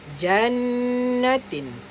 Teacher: Dengung dekat huruf nun lah, sebab nun syaddah.